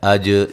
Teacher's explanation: اج جیم پہ قلقلہ کریں گے